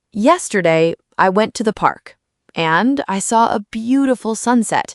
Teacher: you paused after park, after sunset, and those are natural breaks. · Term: breathing pauses